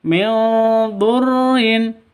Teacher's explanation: Apabila ada nun mati atau tanwin bertemu dengan yang 15 itu maka cara bacanya disamarkan didengungkan samar ditambah dengung